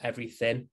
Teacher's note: we might drop the g at the end of a word